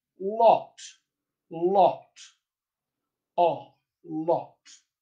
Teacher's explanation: the open back rounded vowel, all, all. All right, that sound appears in received pronunciation accents in a word like locked